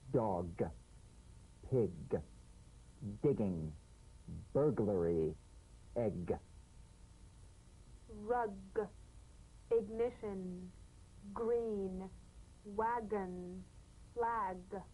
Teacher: back of the mouth without tightening pressing or pushing good good you'll feel a crisp tap and a voiced pulsation of the back of the tongue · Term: drum beat G